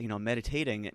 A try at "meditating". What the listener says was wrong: Meditating. You put the emphasis on the wrong syllable.